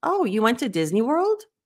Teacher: you have to do it with a question inflection what we call an uptick